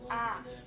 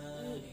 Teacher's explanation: Makhraj huruf alif pada al-halq atau tenggorokan, tepatnya pada tenggorokan bagian bawah atau aqsal halq.